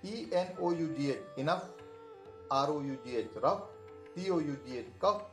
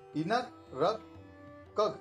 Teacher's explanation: कई बार अंग्रेजी में GH का उच्चारण घ न होकर फ होता है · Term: फ का उच्चारण